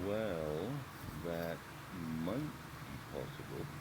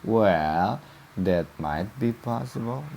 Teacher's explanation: Ada falling intonation. Jadi ke bawah jatuh.